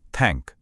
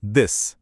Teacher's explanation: एक में vocal cords में कंपन नहीं है। दूसरे में है। और इसी से एक बिल्कुल नई ध्वनि बन जाती है।